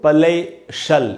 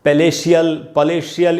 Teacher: CIAL या TIAL, तो आपको इनको शल पढ़ना है, शियल नहीं पढ़ना चाहिए